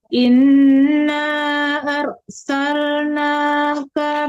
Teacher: Panjangkan rnya dua harakat.